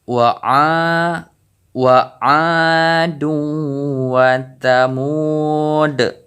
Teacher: Jadi hukum bacaan yaitu qalqalah kubra. Jadi pantulan huruf dal ini lebih besar karena kita wakaf